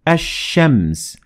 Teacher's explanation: notice how we dropped the lam in the word ashems · in this type of أل you will drop the لام in أل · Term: sun أل